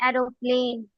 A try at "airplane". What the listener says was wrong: एरोप्लेन नहीं बोलते, उसकी प्रोनाउंसिएशन एयरप्लेन होता है, ठीक है, एयरप्लेन।